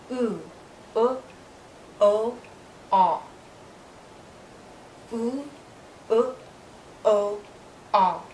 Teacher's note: When I move to these vowels, the back part of my tongue is higher. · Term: back vowels